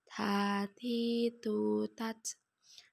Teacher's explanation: cara melafalkan huruf ta dengan menyentuhkan ujung lidah dengan gusi gigi seri bagian atas dengan mengalirkan sedikit nafas